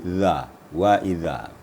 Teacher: Sekarang yang lembutnya zal. Di cara membacanya ditemukan lidah, ujung lidah kita dengan ujung gigi atas. Kemudian gigi atas direnggangkan.